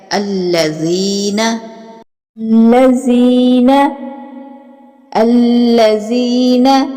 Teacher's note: یائے مدہ جو ہے وہ کھینچ کے پڑھا جاتا ہے